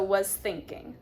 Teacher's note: the S blends into the T, so was thinking. It's the sound, not I was thinking, I was thinking.